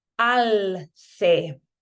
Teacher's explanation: in Spain, we're going to make each of these sounds with a lisp.